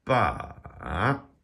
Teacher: And you can hear that it goes down and then it comes back up again. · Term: dipping tone